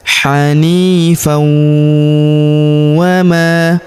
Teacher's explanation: tanwin an huruf bertemu huruf wau maka tanwin annya melebur ke huruf wau